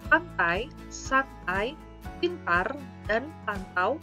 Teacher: Struktur bunyi N, T di dalam kata pantai, santai, pintar, dan pantau sama-sama berfitur apikodental.